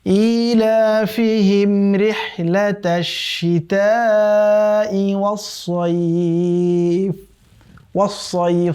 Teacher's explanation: এই সদের উচ্চারণ যেন ওয়াসাইফ না হয়ে যায় সিনের মতো করে।